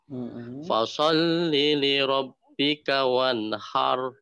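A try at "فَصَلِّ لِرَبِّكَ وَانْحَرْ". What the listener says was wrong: Ujung lidahnya turunin ke gigi seri bawah. So-nya tadi yang kurang.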